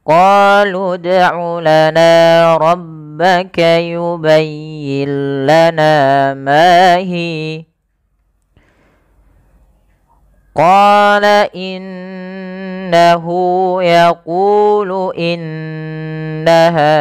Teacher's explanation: bacaan gunah dengan cara menahan suara bunyi nunnya dan dimasukkan ke rongga hidung sepanjang dua harakat. Maka kesalahan yang terjadi tidak menahan suara nunnya atau misalkan langsung saja qala innahu yaquulu innaha ya itu kurang tepat.